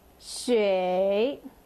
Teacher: 水, third accent, so down and up.